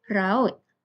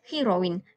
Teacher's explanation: gabungan dua bunyi vokal yang terpisah dalam sebutan berbeza dengan diftong yang dilafazkan secara berterusan dalam satu hembusan nafas. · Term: vokal rangkap